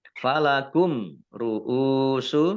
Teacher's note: mim sukun bertemu dengan huruf ro juga izhar safawi. Dibaca jelas.